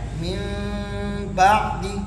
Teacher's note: اس میں میم کو بالکل نرمی سے پڑھیں گے اور با میں جاتے ہوئے سختی کریں گے